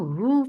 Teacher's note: for dhamma circle lips, the sound is short